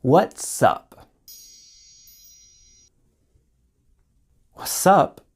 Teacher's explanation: Notice with what's up, the T sound disappeared completely.